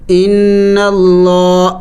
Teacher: نون مشدد ہے اور نون مشدد پر ہمیشہ غنہ کیا جائے گا